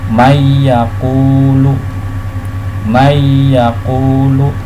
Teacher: tulisannya adalah man yaqulu, namun nunnya dimasukkan ke dalam huruf ya menjadi mayyaqulu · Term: idgham bihuna